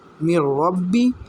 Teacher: ہم میم کو را کے ساتھ ملائیں گے